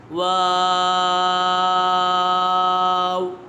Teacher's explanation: واو یہ حرف شفویہ ہے، اس کا مخرج ہے دونوں ہونٹوں کی گولائی سے ادا ہوتا ہے۔